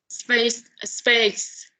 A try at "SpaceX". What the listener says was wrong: Space X. Space. Okay, so it seems that you're going to have two syllables there. X, X, X. Space, X, X. X. Space X. Space X.